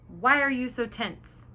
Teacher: the intonation went down because it's a direct question